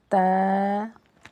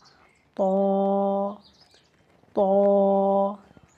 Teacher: تا کو پڑھیں گے ایسے تا، اور طا کو ذرا منہ گول کے کر کے موٹا کر کے پڑھا جائے گا